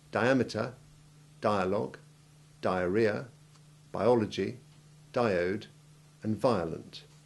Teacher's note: We also always have long I1 in the prefixes dia, bio, dio, and vio